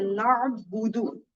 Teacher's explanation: عین کو ہی نکالنا ہے, اور یہ مخرج ہوگا ہمارا حلق کا درمیان